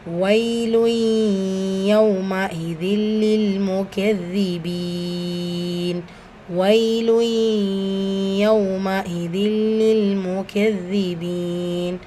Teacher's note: இங்கே பிலா குன்னா இணைக்கிறோம், ஆனால் குன்னா செய்ய மாட்டோம்.